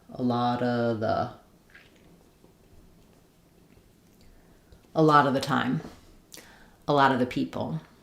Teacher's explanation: So it sounds like a lotta. We're linking that T to the next schwa. · We're going to have a short reduced schwa for all of these vowels except for the ah of lot. We'll flap this T.